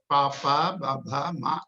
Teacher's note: the pavarga, the labials. It is through the lips